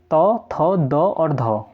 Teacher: देखिए जब हम तौ वर्ग का उच्चारण करते हैं तो जो हमारी जीभ होती है वो दंत मूल, मतलब जहाँ पर दांत निकलते हैं ना, तो वहाँ पर टच होते हैं, ठीक है, इसी कारण इन्हें दंत्य कहा जाता है, ठीक है। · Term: दंत्य वर्ण